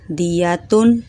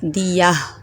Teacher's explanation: گول تا پر جب بھی وقف کرتے ہیں تو اس کو ہاں میں تبدیل کر دیتے ہیں